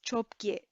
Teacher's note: So normally independently they would be cho and ge, but together it becomes chop ge with a p sound in the middle